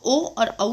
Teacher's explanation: ओ और औ, इन दोनों का उच्चारण स्थान भी दो उच्चारण स्थान की सहायता से बोला जाता है, जो है कंठ और ओष्ठ, इसलिए इनको कंठोष्ठ कहा जाता है। तो ओ और औ का उच्चारण स्थान है कंठोष्ठ